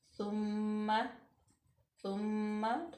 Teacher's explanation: मीम मुशद्दद, तो यहाँ पे गुन्ना पैदा होगा। सुम्मा सुम्मा थोड़ा सा वक्त लगाएंगे यहाँ पे।